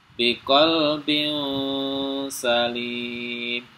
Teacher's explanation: Jadi tidak dibaca jelas tapi mendengung bukan biqolbin Salim tapi biqalbin Salim ya samar masuk ke huruf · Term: Ikfa